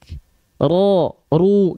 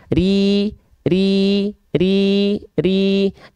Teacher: dibaca dengan tipis yaitu dengan cara istifal dan infitah Aula mulutnya terbuka dan istiffal pangkal lidahnya enggak naik ya Ri